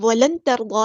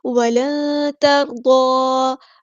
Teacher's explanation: اخفا کرتے ہوئے ایک الف کے برابر رکتے ہیں، ٹھیک ہے، اور نون کی آواز کو چھپاتے ہیں۔ نون کی آواز کو اس طرح چھپاتے ہیں کہ ہماری زبان سٹل نیچے رہے گی، تالو کی طرف نہیں چپکے گی۔